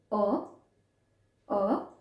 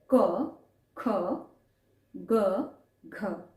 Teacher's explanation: कंठ स्थान जहां से कंठ से उच्चारण किया जाता है